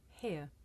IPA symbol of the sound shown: h